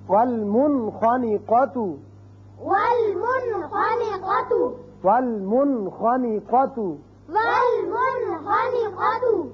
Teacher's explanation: اب آخری جو حرف تھا حروف حلقی میں سے وہ ہے خا. نون ساکن کے بعد اگر ایک کلمے میں آئے تو یہاں اس کا اظہار ہوگا